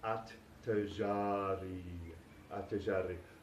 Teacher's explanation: the L is not pronounced because the ta is a sun letter, so it gets doubled here in the article.